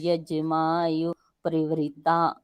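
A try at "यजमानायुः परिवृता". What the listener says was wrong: यज्ञ माँ यजुर, एक य छोड़ा आपने। यज्ञ माँ यजुर ययुर परिवृता,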